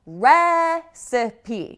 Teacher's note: You can see right away that the stress is very different. It's on the first syllable with recipe.